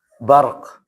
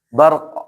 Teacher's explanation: Ingat, ro-nya ada, qaf juga tidak hilang.